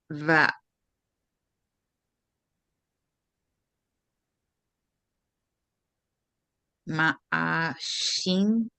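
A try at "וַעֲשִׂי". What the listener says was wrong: But there's no mem. It's va'asi.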